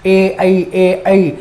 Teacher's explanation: हमने पढ़ा ए और ऐ का उच्चारण स्थान कंठ तालु है, यानी कि उसका उच्चारण कंठ से भी होता है और तालु से भी होता है, लेकिन दोनों में से ज्यादा सक्रिय कहाँ है? तो ए ऐ का उच्चारण करते समय जीभ का आगे वाला भाग ज्यादा सक्रिय रहता है। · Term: अग्र स्वर